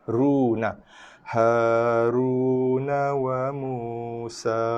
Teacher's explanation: Ra bagi atas, ra bagi hadapan, dhammah. So dibaca dengan tafkhim tebal